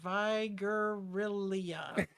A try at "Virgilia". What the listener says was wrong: Virgilia. You have one syllable too many. But yeah, so it's just Virgilia.